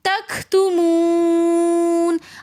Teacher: تختمون تمون کے اندر بھی واو مدہ ہونے کی وجہ سے ہم ایک الف کی مقدار کھینچ کر پڑھیں گے. واو مدہ کے بعد پھر آگے دوبارہ ساکن حرف آ رہا ہے تو وقف کی حالت میں ہم اس کو تھوڑا سا زیادہ کھینچ کر پڑھیں گے.